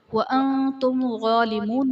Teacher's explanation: نون ساکن کے بعد حرف اخفا تا آ رہا ہے تو یہاں پر اخفا کا قاعدہ ہوگا، یعنی نون ساکن میں ہم غنہ کر کے پڑھیں گے